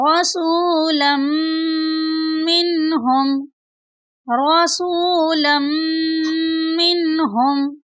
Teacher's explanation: لام کو میم شدید کے ساتھ ملا کر پڑھیں گے اور میم شدید پر غنہ بھی کریں گے